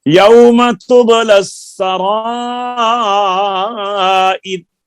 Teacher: تب کے با پہ قلقلہ صحیح کریں